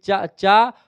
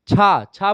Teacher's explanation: चा बोलेंगे तो कम वायु बाहर निकलेगी लेकिन जब आप बेटा छा बोले च चा और छा छा बोलेंगे तो ज्यादा वायु बाहर निकलेगी तो ऐसे में यह महाप्राण हो जाएगा ऐसे जा बोलेंगे तो